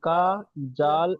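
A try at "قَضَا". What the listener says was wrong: টান একজনও দিচ্ছেন না। কাজা, জাল আলিফ জবর জা, আলিফের ডান দিকে যাবার আছে, আলিফ মাদ্দা হবে, আলিফ মাদ্দাকে আগামী টান দিয়ে পড়তে হবে।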